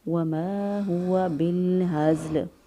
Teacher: گلے کا حصہ ہے وہاں سے ہا ادا کریں گے، بالہزل۔ زا کی ادائیگی میں ہلکی سی چڑیا جیسی یا سیٹی جیسی آواز آنی چاہیے اور لام وقف کی صورت میں ساکن ہو جائے گا۔ پھر